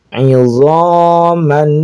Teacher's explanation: Maka ini disebut dengan idgham bighunah. Diidgamkan dimasukkan kepada huruf nun dengan menggunakan gunah. Ah kita tahan idaman.